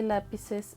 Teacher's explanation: lápices tiene la sílaba tónica en la antepenúltima